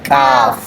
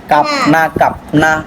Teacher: কাফ একটা বাতাস বের হবে